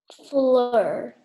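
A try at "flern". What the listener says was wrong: Fleur, and then you forgot the N sound.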